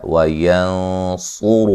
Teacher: نون ساکن کا موٹا اخفا ہے